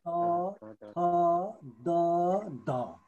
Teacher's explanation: है दोस्रो ख नम्बरमा दन्त्य हेर्नुस् अब यसलाई सम्झिनु होला है जिब्रोको अग्रभागले भनेको टुप्पोले माथिल्लो दाँतको पछिल्लो भागलाई माथिपट्टिको जुन दाँत छ त्यो माथिल्लो दाँतको पछिल्लो भागलाई छोएर उच्चारण गर्ने